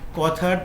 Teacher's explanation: কথার থ হলো অঘোষ মহাপ্রাণ ধ্বনি